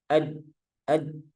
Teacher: Jadi harus dirapatkan ad aj baru memperoleh sifat yang syiddah yang kuat yang tertahan.